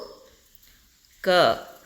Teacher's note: ಕಡಿಮೆ ಉಸಿರನ್ನ ತೆಗೆದುಕೊಳ್ಳತಕಂತಹ ಅಕ್ಷರ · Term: ಅಲ್ಪಪ್ರಾಣ ಅಕ್ಷರ